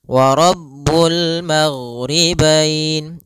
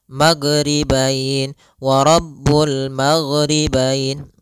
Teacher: karena huruf gin tidak ada sifat qalqalah, tidak ada sifat pantulan.